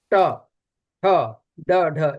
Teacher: ट वर्ग का उच्चारण मूर्धा से होता है